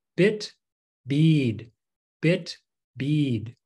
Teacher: bit would be normal bit short but then we say bead bead elongate that bead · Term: long and shorts vowel